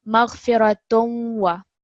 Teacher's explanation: But just remember, when you are reading it, make it a bit of a nasal sound, but also pause a little bit because it's the shadda on the waw.